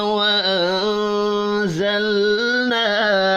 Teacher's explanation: نون ساکن کے بعد زا ہے, اخفاء حقیقی ہوگا, لام ساکن پر قلقلہ نہیں کرنا.